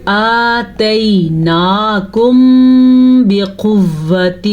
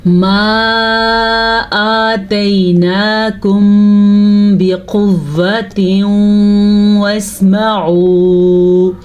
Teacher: یہاں پہ اخفاء شفوی کا قاعدہ تھا، ہم نے ہونٹ بند کر کے غنہ ادا کیا. میم ساکن کے بعد جب بھی با آئے گا آپ نے یہ والا غنہ ادا کرنا ہے.